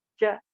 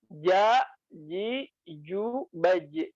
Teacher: Yang tepat itu adalah pengucapan ja dari tenggorokan bagian tengah, ja, diangkat ke atas langit-langit. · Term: jim